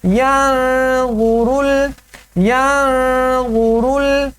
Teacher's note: یہاں پر نون ساکن ہے اور اس کے بعد حروف اخفا میں سے غا آ رہا ہے تو یہاں پر اخفا کریں گے